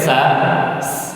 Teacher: Kalau kita lihat di gambar itu ujung lidah tidak menempel gigi seri bawah ya. Jadi Kalau ujung lidah kita menempel gigi dari bawah, nanti ada suara tajam, ya. Ada suara tajam seperti siul, ya. Itu huruf sin.